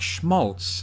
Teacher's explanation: words like schmaltz, that came from German that get that kind of sh sound